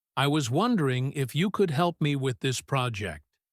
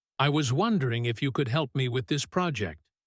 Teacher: Notice how soft the beginning is. I was wondering. It goes up slightly. It is polite.